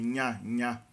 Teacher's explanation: representa uma espécie de semivogal nasal, similar ao NH do português mesmo